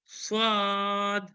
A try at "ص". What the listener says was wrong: جھٹکا نہیں دینا. صاد ایسا نہیں، صاد.